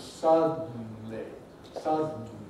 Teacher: we go straight from d to n